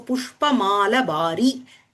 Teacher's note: So for the long vowel, a short is substituted in Ishtaka when it is followed by a word called Chita, and Ishika when it is followed by a word called Tula, and for Mala when it comes before a word Bharin. So here Mala Bhari, the Akara in the Mala is shortened.